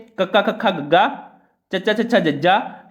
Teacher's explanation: ਕਹਿੰਦੇ ਜਿਨ੍ਹਾਂ ਨੂੰ ਉਚਾਰਨ ਸਮੇਂ ਪਹਿਲਾਂ ਆਪਾਂ ਡਕਵੇਂ ਵਿਅੰਜਨ ਦੇਖਦੇ ਹਾਂ ਜਿਨ੍ਹਾਂ ਨੂੰ ਉਚਾਰਨ ਸਮੇਂ ਫੇਫੜਿਆਂ ਵਿੱਚੋਂ ਆ ਰਹੀ ਹਵਾ ਨੂੰ ਮੂੰਹ ਵਿੱਚ ਕਿਸੇ ਨਾ ਕਿਸੇ ਥਾਂ ਤੇ ਪੂਰੀ ਤਰ੍ਹਾਂ ਰੋਕ ਕੇ ਇੱਕਦਮ ਛੱਡਿਆ ਜਾਂਦਾ ਹੈ ਉਹਨਾਂ ਨੂੰ ਡਕਵੇਂ ਵਿਅੰਜਨ ਕਿਹਾ ਜਾਂਦਾ ਹੈ।